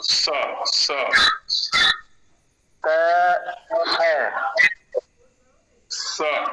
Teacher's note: स में दंत सकार में जीव को मरोड़ना नहीं है बिल्कुल भी एकदम आराम